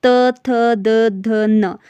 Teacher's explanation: दांत आपका टच हो रहा है, इसलिए आपका जो त्वर्ग वर्ग है ये आपका दंत से उच्चारित होता है।